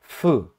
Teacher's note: F também, o ar para, sim, mas não totalmente. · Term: consoantes fricativas